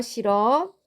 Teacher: 히읗 탈락은 어간 받침이 히읗으로 끝나고 모음으로 시작하는 형식 형태소가 뒤따를 때 어간 받침 히읗이 탈락하는 현상을 말합니다